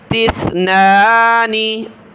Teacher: तिस सा पर ज़बान निकालें, तिस्नानी। बहुत सारे सीन पढ़ते हैं तिस्नानी, सीन नहीं है सा है